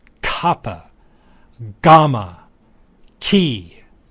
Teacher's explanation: throat these are called vellers or sometimes gutturals Kaa GMA key notice how the interruption occurs further back in the mouth